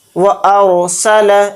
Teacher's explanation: أَلَمْ يَجْعَلْ كَيْدَهُمْ فِي تَضْلِيلٍ وَأَرْسَلَ عَلَيْهِمْ طَيْرًا أَبَابِيلَ، وَأَرْسَلَ، پہلے اس کو سمجھتے ہیں، یہاں پر دیکھیں را ساکنہ سے پہلے زبر آ رہا ہے تو یہ را موٹا پڑھا جائے گا، اس کو باریک نہیں پڑھیں گے۔